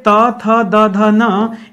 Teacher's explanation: जो जीभ हमारी है वो जाके दांत को टच कर रही है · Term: दंत वर्ण